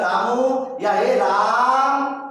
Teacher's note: यहाँ जो रा है इसका उच्चारण ह्रस्व से त्रिगुणा लग रहा है